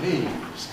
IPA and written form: niːz (knees)